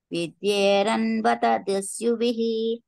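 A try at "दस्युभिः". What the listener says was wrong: దస్యుభిః మాతాజీ, దుస్యుభిః కాదు, దస్యుభిః.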